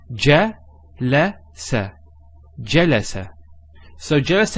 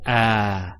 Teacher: we don't elongate there's no elongation of the a sound